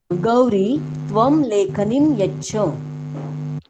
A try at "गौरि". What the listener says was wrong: गौरी अथवा गौरी। न, गौरी अथवा गौरी ह्रस्व भविष्यति दीर्घई। लिखते समय ह्रस्व ई लिखेंगे, गौरी छोटा ई अथवा दीर्घ ई? ह्रस्व। गौरी। गौरी न, गौरी।